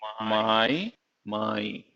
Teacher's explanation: it started with a consonant, a voiced consonant, which was a nasal, which is m. I, which is really two vowels coming together, which is called diphthong.